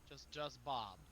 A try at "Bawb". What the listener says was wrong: No, you're saying it wrong. It's Bawb. It's an AWHB, not a BOB. Bawb.